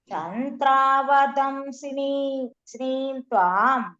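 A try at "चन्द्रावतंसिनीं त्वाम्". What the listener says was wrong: சந்திராவதம் த போடுங்க, த கிடையாது. சந்திராவதம்சினீம் த்வாம் சினீம் த்வாம். வந்து தீர்க்கம் இல்ல, சி வந்து குரில், நீ தான் தீர்க்கம்.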